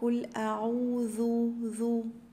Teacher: حرف الذال من الحروف اللثوية اللي بخرج فيها طرف اللسان